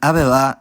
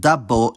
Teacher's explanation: /b/ lenites to an approximant [β̞] between vowels, but only when it's not geminated.